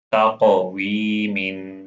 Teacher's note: قاف heavy letter ہے، اس کو قلقلہ بھی کرنا ہے